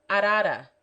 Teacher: In other positions, it is pronounced by striking the tongue lightly against the roof of the mouth, almost as if pronouncing the letter D.